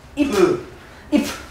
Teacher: 표기는 피읍이지만 발음될 때는 비읍이다가 음절 끝소리 규칙입니다